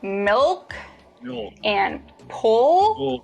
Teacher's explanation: when you produce the dark L the back of your tongue bunches